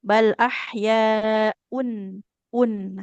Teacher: Bunyi nun sukunnya jelas. Un tidak boleh disertai dengung ya. Jadinya tidak samar-samar. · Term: izhar